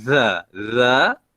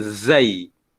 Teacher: Za, lidah kita keluar dari gigi. Zai, berada di belakang gigi.